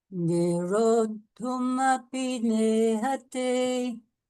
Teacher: you've still got the long O, but followed by the double consonant